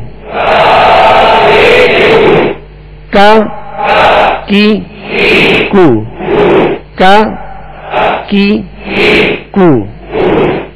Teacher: یہ مخارج کی لسٹ میں آپ دیکھیں گے قاف دو نقطے والا، زبان کی جڑ، تالو کا نرم حصہ. اور کاف کو جب ادا کریں گے تو کاف کا مخرج کیا ہے؟ زبان کی جڑ، تالو کا سخت حصہ